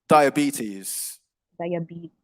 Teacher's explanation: So it's a longer E sound on the penultimate syllable, the second to last syllable.